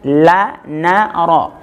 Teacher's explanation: ujung lidah ditempelkan ke gusi atas bagian dalam